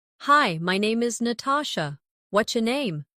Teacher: Notice how what's your can sound like whatcha in casual speech.